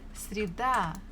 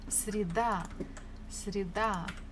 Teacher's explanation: Stress falls on A.